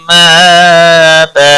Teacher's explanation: حمزہ کے اوپر ایک الف کے برابر کھینچ کر پڑھیں گے. وقف کی صورت میں تنوین کو بدل کر ایک زبر کے ساتھ پڑھیں گے. وقف بالابدال ہوگا ایک الف کے برابر کھینچ کر وقف کریں گے.